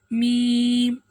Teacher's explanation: दोनों होठों के खुश्क हिस्से से